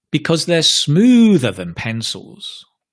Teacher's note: Because you're comparing, you're stressing extra strongly the comparison word.